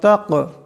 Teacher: তা কাফ জবর তাক, তা কাফ জবর তাক, এখানে বড় কাফ কলকলা হরফ আওয়াজটিতে টক্কর খাবে